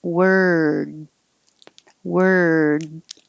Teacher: it's the same er sound in world but you finish with your tongue in the d position so it's the same as moving from the r to the